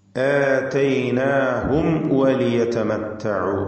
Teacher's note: ശേഷം വന്നിട്ടുള്ളത് വാവാണ് എന്നതുകൊണ്ട് آتيناهم وليتمتعوا വ്യക്തമാക്കി മീമിനെയും ശേഷം വന്ന വാവിനെയും ഉച്ചരിക്കണം എന്നർത്ഥം. രണ്ടും ചുണ്ടുകളിൽ നിന്ന് വരുന്ന അക്ഷരങ്ങളാണ്, ഷഫവിയ ഹർഫുകളാണ്.